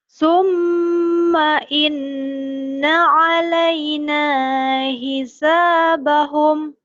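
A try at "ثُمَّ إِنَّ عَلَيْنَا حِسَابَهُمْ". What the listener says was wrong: Orang yang nangis suaminya pergi. Kalau kalau suaminya pergi kan nadanya bukan abang kembali sama aku. Harusnya nadanya ya enggak apa-apa lah. Summa inna alaina hisabahum.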